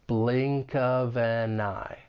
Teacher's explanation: it's like we're just carrying that final consonant sound over to the next syllable.